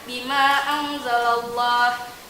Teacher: terdapat nun sukun bertemu dengan huruf zal, maka dibacanya samar-samar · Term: ikhfa hakiki